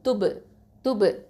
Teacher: ப வந்து சுகுன் இருக்கிறனால கல்கலா சுகரா கொடுக்கணும்